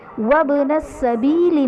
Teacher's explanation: وابن السبیل میں با حرف قلقلہ ساکن ہے تو یہاں پر قلقلہ خوب ظاہر کریں گے